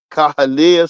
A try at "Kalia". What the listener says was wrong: No, you said Caha.